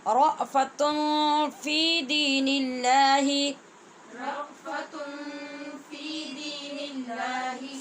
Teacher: نون تنوین کے بعد فا ہے، یہاں پہ اخفا کر رہے ہیں ہم، اس وجہ سے تن پڑھا ہے، تن نہیں پڑھا.